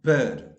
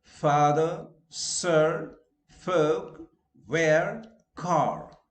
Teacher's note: No, you are going to iron your clothes. Okay, now R is not pronounced in a standard British English when the next sound is a consonant sound,